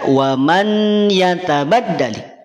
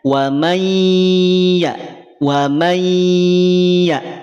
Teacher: N ini dileburkan dimasukkan pada bunyi ye · Asalnya dibaca n, tetapi karena ada huruf ya setelahnya, maka n ini dileburkan, dimasukkan pada bunyi y. Wa may. Jadi tidak dibaca wa man yatabaddali. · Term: idgham, Idgham bigunnah